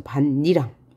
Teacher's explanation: 이 니은 때문에 앞말의 파열음이 비음으로 바뀌었죠. 비음화. 세 가지 음운 변동이 일어난 거예요.